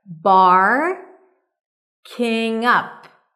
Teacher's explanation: The stress is on up.